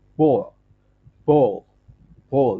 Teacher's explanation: the tip of the tongue touches the alveolar ridge with the sound released through the sides of the tongue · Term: L sound